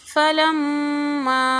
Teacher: फलम्मा लंबा नहीं करेंगे, मीम पर गुना करेंगे और इसको हरकत देंगे। फलम, इस तरह की आवाज़ आएंगी, माँ वाली की आवाज़ आना चाहिए।